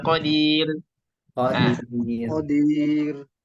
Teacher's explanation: kalau si roknya tersebut diawali dengan ya sukun, maka dia menjadi tipis, tarqiq